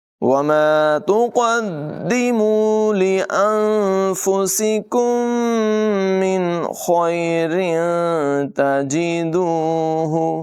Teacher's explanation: میم ساکن کے بعد ایک اور میم ہے، یہاں پر ادغام شفوی ہوگا، غنہ کر کے پڑھیں گے · سین کے بعد میں سیٹی ہوگی، کاف کی آواز باریک ہوگی · وَمَا تُقَدِّمُوا لِأَنفُسِكُم مِّنْ خَيْرٍ تَجِدُوهُ، قاف کی آواز پر ہے، دال کو جماؤں کے ساتھ ادا کریں گے ذرا رک کر